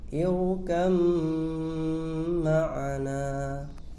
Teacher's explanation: Contoh yang terakhir yaitu ba sukun bertemu dengan mim. Cara membacanya langsung diidghamkan ke mim disertai dengan gunnah.